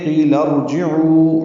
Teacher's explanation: عو و مدہ 2 حرکات لمبا